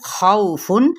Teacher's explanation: واو لین کا قاعدہ ہو رہا ہے اور نرمی کے ساتھ پڑھیں گے ، لیکن یہاں پہ خو کیا ہے، پل لیٹر ہے، خوفن